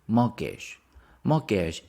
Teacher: we don't pronounce the t